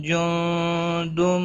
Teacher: لا يستطيعون نصرهم وهم لهم جند محضرون، ملانے کی صورت میں میم کے بعد واو آیا ہے، اظہار شفوی ہوگا، گنہ نہیں کریں گے، اور ہم لہم دونوں میم ساکن پر اظہار شفوی ہوگا، گنہ نہیں کریں گے۔ جو نون ساکن کے بعد حروف اخفا کا حرف آیا ہے، اخفا حقیقی ہوگا، گنہ کے ساتھ پڑھیں گے۔